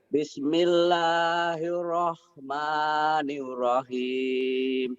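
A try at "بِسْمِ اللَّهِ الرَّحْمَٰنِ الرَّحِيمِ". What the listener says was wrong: Bapak masih kayak orang barat, New Rohim. Bapak agak cadel ya? Jadi gak bisa R.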